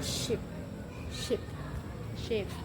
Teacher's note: Ini termasuk ke dalam bunyi voiceless atau tidak bergetar karena tidak menimbulkan getaran di pita suara. Dia masuk ke dalam postaviolel.